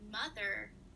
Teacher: there is clear emphasis on the first syllable in mother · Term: stress